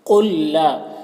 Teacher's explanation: ساکن والا لام مشدد والے لام کے ساتھ مدغم ہو جائے گا، یعنی پھر اس ساکن والے لام کو نہیں پڑھیں گے، قوف کو یہ مشدد والے لام سے ملا کر پڑھیں گے۔